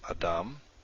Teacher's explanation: it's the last syllable dom that is accented